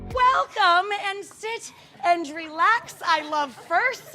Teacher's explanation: she's got a distinctly husky voice